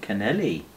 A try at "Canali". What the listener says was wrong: No, it's Canali. There's no E in...